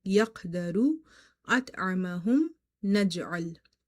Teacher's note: inside the word qalqala will be weak